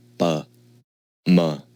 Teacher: to produce these consonants we stopped the air with the lips we don't use the tongue at all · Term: lib consonants, Lip consonants